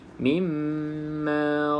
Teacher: pastikan mim yang bersabdu dengung dengan Cukup dua harakat